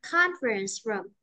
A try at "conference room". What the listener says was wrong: conference room. Conference chứ không có phờ luôn nhé. Conference room. Room đi xuống nha. Room đi xuống.